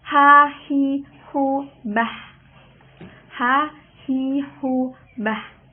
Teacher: Makharijul huruf dari huruf ha ini ialah al-halqi. Al-halqu yang artinya tenggorokan.